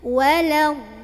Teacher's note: Yang betul adalah dodnya 6 masuk ke lam, perpindahan dari dod ke lam agak dihentakan